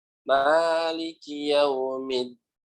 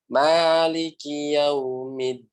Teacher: Huruf dal itu maknanya ujung lidah kita bertemu tempat tumbuhnya gigi seri atas.